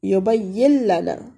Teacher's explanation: ہم یہاں پہ نون کو ادغام کر لیتے ہیں اور غنہ کے بغیر ہی پڑھیں گے